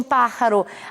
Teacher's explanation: a sílaba tônica é antepenúltima, vai acentuada, pelo fato de ser uma esdrúxula.